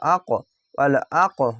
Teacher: এখানে কলকলা ধাক্কা মেরে নিচে সাউন্ড যাবে না উপরে সাউন্ড যাবে কফ অক্ষর মোটা অক্ষর তার জন্য উপরে সাউন্ড যাবে